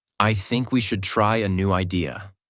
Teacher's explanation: Voice goes down at the end. This is called falling intonation, and it instantly makes you sound more mature, certain, and in control.